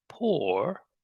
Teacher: So the vowel sound is o, extended or. Then the tip of the tongue comes up, or.